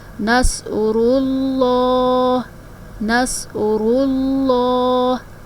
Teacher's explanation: لفظ اللہ کے لام کو موٹا پڑھا جائے گا، اس لیے کہ لفظ اللہ کے نام سے پہلے پچھلے حرف کے اوپر پیش ہے۔ جب بھی لفظ اللہ کے نام سے پہلے پچھلے حرف پہ پیش آئے گی تو اس صورت میں ہم اسلام کو موٹا پڑھیں گے۔